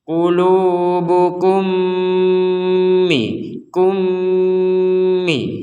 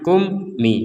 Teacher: jelas untuk yang ini enggak boleh karena ini mim ketemu mim kita harus memasukkan mim yang pertama dengan yang mim yang kedua kemudian disertai dengungan 100%